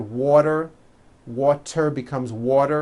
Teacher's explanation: when a t Falls between two vowels turns into a d